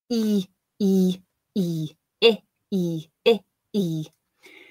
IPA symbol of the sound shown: iː